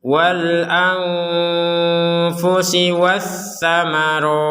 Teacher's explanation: Nun sukun bertemu fa, kita baca dengan samar.